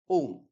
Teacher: जिसको उच्चारित करने में 3 मात्रा के बराबर का समय लगता है, वो है त्रिमात्रिक।